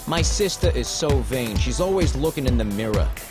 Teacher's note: replace the r at the end of a word with an a sound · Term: Jersey accent